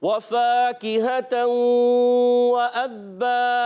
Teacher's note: वाव की अदायगी होठों की गोलाई से